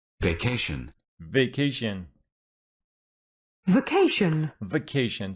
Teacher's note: vacation is a noun and it's got its stress on the second syllable.